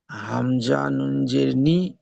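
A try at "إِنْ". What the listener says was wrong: নি নয়, হামজা নুন জের ইন। ওই যে হামজা, হামজা জের ই, এই যে উচ্চারণটা, ওই উচ্চারণটা প্রথমে আনতে হবে, তারপরে নুনের উচ্চারণ আনতে হবে। হামজা নুন জের ইন, হামজা জের ই, হামজা নুন জের ইন, ইন, নুন জের নি, ইন নি, ইন নি।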